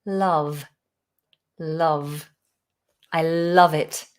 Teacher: It's the sound, like in the word up, above, glove, love, slightly higher, Okay, so you say la, not la, love. And make sure you've got the nice V vibration on the lip.